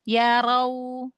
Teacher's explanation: Linnya lembut tapi wawnya sampai monyong. Karena dia lin huruf waw ya.